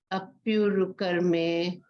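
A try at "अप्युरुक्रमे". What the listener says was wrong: not karme, krame, kra.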